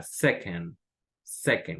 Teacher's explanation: en second, esta segunda sílaba es como una E muy, muy poco pronunciada